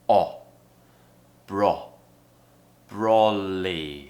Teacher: so it's low and in the back of the mouth, and we create a very, very round shape with the mouth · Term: O sound